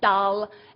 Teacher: if you say dal and you curl your tongue back, that's called a retroflex sound. And the other one is duh, where you put your tongue behind your teeth.